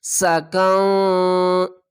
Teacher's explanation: قاف کو نون سے ملائیں گے اور نون کی آواز کو چھپا کر پڑھیں گے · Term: اخفا